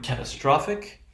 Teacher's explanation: let's say the primary stress will occur on the third syllable · This time it is the third syllable. So the third syllable receives primary stress.